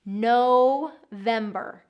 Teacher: Long O in there, like you're saying no. November. The other piece is getting that V on your lip.